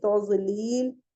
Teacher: علم یجعل کیدہم فی تضلیل، اور ذات کا مخرج بہت ہی، نہ یہ دال ہے اور نہ یہ زا والا زا ہے، اس کا مخرج دونوں کے بیچ کا ہے